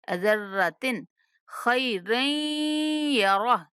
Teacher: ذرۃ پہ غنہ نہیں کریں گے کیونکہ آگے حروف حلقی میں سے خار ہے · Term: اظہار